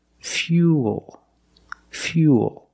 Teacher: it's U plus the dark L Fuel fuel not fuel remember when you link the ooh plus the dark L the mouth opens a little bit but it's not a real syllable